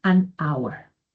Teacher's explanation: Entonces yo le contesto, mira, lo que pasa es que la A, esta es una regla sonora. La H, en el caso de hour, es muda, por lo que el primer sonido sería de vocal. Y por lo tanto se utiliza an hour.